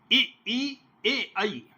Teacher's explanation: अब इसमें जो है जिह्वा की स्थिति में ई ए आई, ये अग्र, जिह्वाग्र इसका मुख्य स्थल है